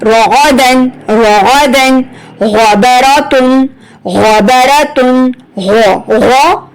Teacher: آپ کی جب آپ پڑھ رہے ہیں نا تو آپ کی غرارے والی جگہ سے آواز نکلی ہے